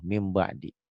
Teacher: ini kan bunyi nun mati itu N. Bunyi N-nya berubah jadi M. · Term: iklab